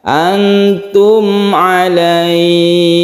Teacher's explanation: makhraj atau tempat keluarnya mim ini ada di syafawi atau bibir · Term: izhar syafawi